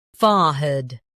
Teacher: In UK, fore is emphasized.